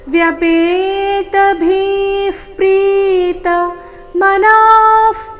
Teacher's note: ಭಿ ಮಹಾಪ್ರಾಣ ದೀರ್ಘ ಹೇಳಿದ ನಂತರ ವಿಸರ್ಗದ ಉಚ್ಚಾರಣೆ ತಗೊಳ್ಳಬೇಕು